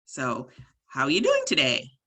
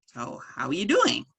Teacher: you notice when you ask a question the last word goes high in pitch